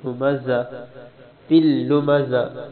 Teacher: زا ھمزہ کے اندر زا ہے، زا سختی والی زا، زا زبان کی نوک نیچے والے دانتوں کے پیچھے لگانی۔ ھمزہ تل لمزہ، اگر یہ بھی پھر زا ہے، یہ بھی سختی سے پڑھیں گے۔